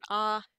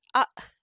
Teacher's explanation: end of the word it doesn't just end in an ah it ends in an uh that abruptly cuts off with that glottal stop